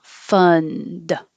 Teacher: you don't have to release the d